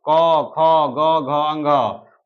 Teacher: ये हम लोग का कंठ से बोला जाता है, इसलिए इसको हम लोग कंठ वर्ण कह सकते हैं